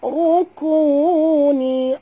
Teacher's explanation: Okey, rukuni, ra ni kena baca tebal, ra baris depan. Ya, kena baca tebal, angkat lidah